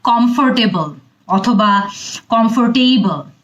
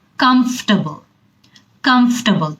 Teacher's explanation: এটাকে আমরা অনেক ভুল করি এবং অনেক ঘন ঘন বলি কমফোর্টেবল অথবা কমফোর্টেবল। এখানে কিন্তু টেবল পার্টটা অনেকটুকুই ছোট হয়ে আসে,